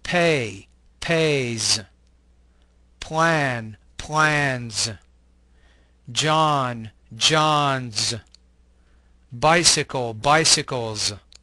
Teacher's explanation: The S ending in this group sounds like a Z, the Z sound.